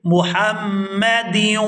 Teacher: ہا کو میم مشدد کے ساتھ ملائیں گے تو غنہ کریں گے